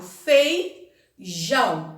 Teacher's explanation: O jão é a forte. É a última sílaba.